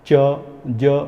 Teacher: Hard palate को जीभ का ऊपर जाके पैलेट को टच होना ज़रूरी है, जिससे पैलेटल साउंड बनते हैं।